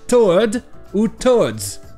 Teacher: la deuxième syllabe, qui est non accentuée, ARD ou ARDS, va avoir le son E.